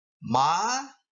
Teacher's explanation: the tone Rises sharply